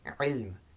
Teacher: a voiced sound with the vocal cord, with the muscles that we use for swallowing, tightening and constricting the throat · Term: ayn